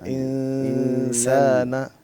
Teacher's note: سین تو بریک ہے، سین تو باریک ہے، سین باریک ہے تو یہ اخفا بھی باریک ہوگا